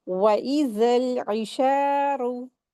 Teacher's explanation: तो यहां पर ऐन का मखरज को अच्छे से अदा करते हुए शीन को दो हरकात खींचेंगे। क्यों? क्योंकि यहां पर अलिफ मद्दा का रूल अप्लाई होगा। और फिर ऐन को अच्छे से हलक से अदा करेंगे।